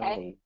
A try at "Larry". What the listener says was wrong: So the trick is what I'm hearing here is so Larry is you're kind of putting your tongue back up to the front, and I need you to pull it back for the R. Larry.